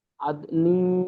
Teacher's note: এখানে গুণনা করেন, আদ নিং, তানবিন নুন সাকিনের পরে তা এসছে, হুরুফে ইকফার পনেরো তা এসছে। এখানে এই নুনটা গুণনা করে পড়তে হবে